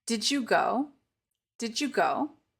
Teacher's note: yourself this is going to change into a j sound so we won't say the D and we'll replace it with a J